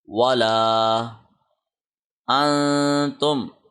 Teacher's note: ہم نے کیا، اخفا، اخفا کے معنی ہے چھپا ہوا، تو نون کو ناک کے اندر ہم نے پڑھنا ہے، 1 سیکنڈ اس کو لمبا کر کے پڑھنا ہے ، پریس کر کے پڑھنا ہے،